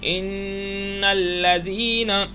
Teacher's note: ناک میں آواز گئی ہے، آواز کو ناک میں چھپایا ہم نے، گھمایا تھوڑی دیر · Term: غنہ